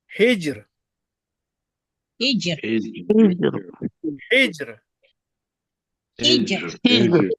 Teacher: when Ra Sakina preceded by Kasra, Ra will be pronounced, recited thin.